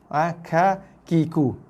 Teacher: Dan ada bersamanya sedikit hembusan nafas ketika kita melafazkan huruf kaf. Ka, ki, ku.